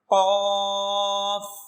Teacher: زبان کی جڑ اور زبان کی جڑ کے اوپر کا تالو